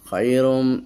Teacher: এই যে তানবিনের পর মিম এসেছে ইদগাম হয়ে গেছে